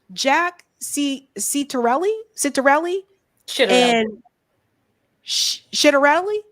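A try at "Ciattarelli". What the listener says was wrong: Not shit, chit.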